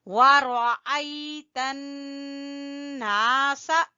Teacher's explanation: نون مشدد کا ہم غنہ کریں گے، اور الف مدہ ہے تو اس لیے نون کو کھینچیں گے